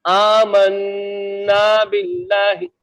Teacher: جس نون پر تشدید ہوگا، نون مشدد ہوگا، وہاں پر اورنج کلر کا نشان ہمیں بتائے گا کہ یہاں پر نون مشدد ہے، نون پر تشدید ہے، لہذا یہاں پر ہمیں ایک الف کی مقدار ٹھہر کر پڑھنا ہے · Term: نون مشدد کا غنہ